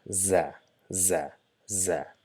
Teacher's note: But in case of za, we touch the tip of the tongue towards the back of the lower incisor and try to produce the buzzing sound